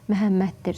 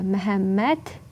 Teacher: Məhəmməddir olacaq. Yəni, D öz kar qarşılığı ilə tələffüz olunacaq